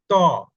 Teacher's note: ত বলতে গিয়ে দেখেন দাঁতের পাটির গোড়ার দিকে যেয়ে লাইগা যায়